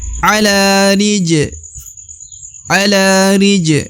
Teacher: huruf ja adalah huruf Qalqalah atau huruf pantul apabila berharakat sukun maka huruf Ja harus dibaca pantul